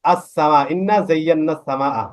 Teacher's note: আলিফ লাম আছে কিন্তু লামটা উচ্চারণ না হয়ে ডাইরেক্ট সিনটা উচ্চারণ হচ্ছে